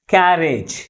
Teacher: first syllable మిగిలిన syllables కంటే ఎక్కువ ఫోర్స్గా పలుకుతుంది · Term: స్ట్రెస్